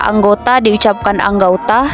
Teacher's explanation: menjadi dua bunyi vokal atau vokal rangkap atau diftong secara berurutan perubahan dari vokal tunggal ke vokal rangkap ini masih diucapkan dalam satu Puncak kenyaringan sehingga tetap dalam satu silaba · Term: diftongisasi